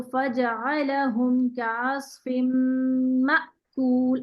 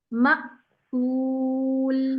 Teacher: मीम के जबर को बिल्कुल हमजा पे आके रोक रही हूँ, और ऐसे रोक रही हूँ कि मेरी सांस भी रुक रही है, साथ साथ आवाज और सांस दोनों पॉज होता है।